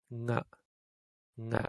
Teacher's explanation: na you can feel it in the back your throat or if you say ang which we do have like buddha it's happening in the back of the throat